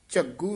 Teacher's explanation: ਘਗਾ ਨਹੀ ਬੋਲਣਾ ਗਗ ਨਾਲ ਬੋਲਣਾ